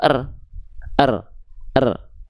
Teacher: Huruf rnya enggak dibaca dengan vokal riru. Enggak. Karena mati dia dibaca cukup dengan bunyi konsonannya saja. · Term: ro sukun